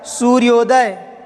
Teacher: आ और ऊ का मेल हुआ तो क्या बन गया? ओ हो गया